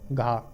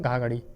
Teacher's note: कंठ महाप्राण घोष व्यंजन